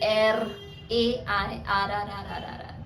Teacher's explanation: Air. You have to make that sound, continuous sound of r. You have to sound it vocally.